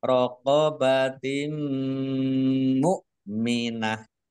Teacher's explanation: Kasroh tanwin bertemu dengan huruf mim, bacaan idgham bi gunnah, masuk dengan mendengung, yaitu mendengung mim. Ditandai mimnya ada tasdidnya, ditahan 2 harokat biar tampak dengungannya. Mukminah tak marbutoh karena wakob dibacanya hak sukun.